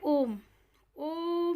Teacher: इसमें 2 से भी ज़्यादा मात्राओं का टाइम लगता है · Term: प्लुत स्वर